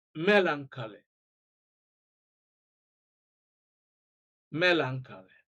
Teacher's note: A, stress is on the first syllable.